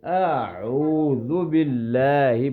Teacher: دونوں کی آوازوں میں فرق کرنا ہے. پہلے سمپل پڑھیں گے اور دوسرے کو عین گلے کے درمیان سے